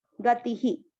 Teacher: ई की मात्रा है इसलिए विसर्ग को पढ़ेंगे ही